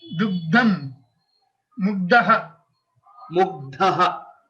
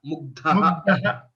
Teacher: Please notice this mahaprana of dhakara.